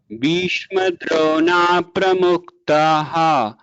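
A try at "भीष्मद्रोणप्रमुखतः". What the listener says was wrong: Bhishma Drona. There is no dirgha after na. So Bhishma Drona Pramukhatah. Bhishma Drona, no dirgha after na. Bhishma Drona Pramukhatah.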